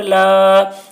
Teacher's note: لام الف زبر لا، الف سے پہلے زبر ہے، الف مدہ ہوا، اس لیے الف مدہ کو ایک الف کے برابر کھینچ کر پڑھیں گے